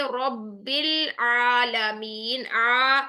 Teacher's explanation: squeezing sound, आपकी रगड़ खाते हुए साउंड आनी चाहिए, जुबान की डायरेक्शन पीछे और नीचे की तरफ आपने मजबूती से पीछे को प्रेस करनी है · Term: आइन